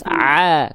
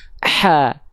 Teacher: kalau ain nggak pakai nafas a, kalau ha kecil pakai nafas ha